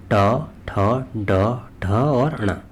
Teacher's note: तालव्य व्यंजन है अगला आता है हमारा मूर्धन्य या मूर्धा व्यंजन इनका उच्चारण मूर्धा और जीभ से होता है